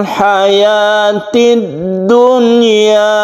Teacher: Nun mati bertemu dengan ya, ini seharusnya akan idgham bi gunnah, tapi ini dibaca izhar atau dibaca terang atau jelas dan tidak berdengung. Jadi suara nunnya itu harus jelas dan tidak didengungkan.